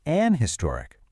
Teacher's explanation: you'll also hear people say an historic, especially if their accent drops that H sound at the beginning